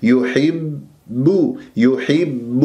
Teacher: والباء شديدة مجهورة ما يجري فيها النفس